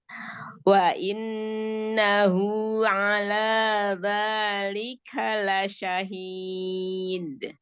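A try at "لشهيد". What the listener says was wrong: La syahid. Jangan seperti ada tasydid. Sebelum qalqalah jangan seperti ada tasydid dalnya.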